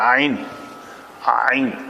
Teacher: عین ہا جو ہے وہ وسط حلق سے ادا ہوتا ہے